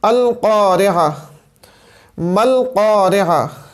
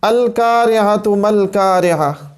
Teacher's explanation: زبان کی جڑ جب اوپر کے نرم تالو سے جا کے ٹکراتی ہے تو اس صورت میں قاف ادا ہوتا ہے، اس صورت میں قاف ادا ہوتا ہے جو کہ پر حروف میں۔